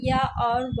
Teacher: व और या ये दोनों जो है अर्धस्वर कहलाते हैं।